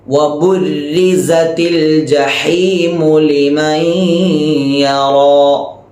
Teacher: ഈ സ എന്ന അക്ഷരത്തിനും സഫീർ എന്ന സിഫത്തുണ്ട്. എന്ന ശബ്ദം സീനിന് വരുന്നത് പോലെ എന്ന ശബ്ദം സായിക്കും വരണം.